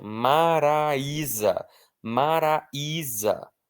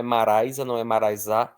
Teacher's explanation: Ele é a parte forte da palavra, porque não é maraisa, não é maraisá, é maraía. Então o i é forte e ele está formando iato com a letra A que vem antes. Maraía. O i está sozinho, é tônico, é iato, então ele vai ser acentuado.